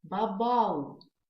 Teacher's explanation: Мы 2 «у» в конце читаем не как по отдельности «у», а мы читаем их как одну долгую «у».